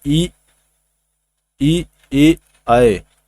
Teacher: ई जो होता है दोस्तों ई ई ए और आए, इसका जो होता है उच्चारण स्थान दोस्तों अग्र भाग होता है